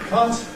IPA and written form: kʌt (cut)